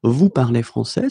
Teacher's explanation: keep the same order and raise their voice at the end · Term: raise the voice